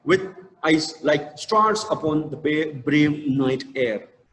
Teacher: in which every other syllable is stressed so it is like your heartbeat